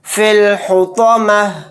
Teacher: आयत करने की सूरत में ता को हा साकिन बनाकर पढ़ेंगे